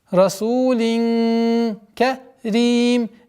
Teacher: правило ихфа в размере двух огласовок назализации